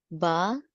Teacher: Please note that we do not apply aspirated sounds. If any, the puff of air is slight.